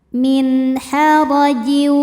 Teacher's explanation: Karena nun sukun menghadapi huruf halqi atau huruf tenggorokan yaitu ha. Maka nun dibaca jelas. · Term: izhar halqi